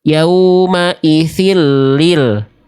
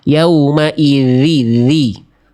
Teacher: zal yang pertama huruf zalnya bocor nafasnya ya. Jadi kayak huruf sa ya.